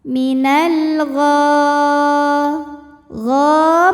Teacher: Kemudian ada hukum alif lam qamariyah karena alif lam menghadapi huruf qamariyah yaitu ghain, maka lam sukun dibunyikan dengan jelas